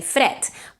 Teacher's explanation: the word fred is spelled with a D, but is pronounced with a T. It's completely voiceless. You don't say fred.